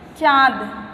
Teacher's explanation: इसका दूसरा जो है निशान अनुनासिक। अनुनासिक ध्वनियों में हवा मुख के साथ साथ नाक से भी निकलती है, यानी दोनों का प्रयोग इसमें होता है, मुख और नाक का भी।